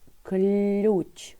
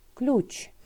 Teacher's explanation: Л ми вимовляємо м'яко і бачимо буковку Ю, але чуємо У, ключ. Отже, буковка Ю позначає один звук У, якщо стоїть після букви, що позначає приголосний звук.